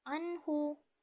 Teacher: dengan huruf mim selanjutnya terdapat hukum bacaan izhar pada ayat Anhu nun sukun bertemu dengan huruf ha maka dibaca jelas